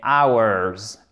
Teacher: Et là, on est en présence d'un des rares noms qui commence par un H en anglais, dont on ne prononce pas la première lettre, donc en l'occurrence le H, comme un H aspiré.